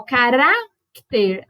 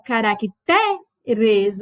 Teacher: Então, se a gente faz o plural, às vezes você muda qual é a sílaba tônica. Ó, carácter, a forte aqui é o ra. Aí, como que fica o plural? Caracteres. Aí o T é que vai ser a forte.